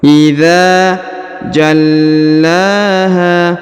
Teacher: Huruf la ditahan dan ditekan ya, karena terdapat tanda tasdid, lalu dipanjangkan 2 harokat karena di atasnya terdapat alif kecil.